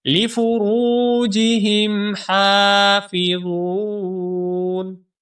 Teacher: لفروجهم میں جو را ہے اس را کو ہم موٹا کر کے پڑھیں گے اور ایک الف کے برابر لمبا بھی کریں گے، کیونکہ یہاں پر واو مدہ ہے۔